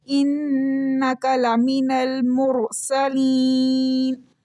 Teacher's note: را ساکن سے پہلے پیش کی وجہ سے اب را موٹی پڑی جا رہی ہے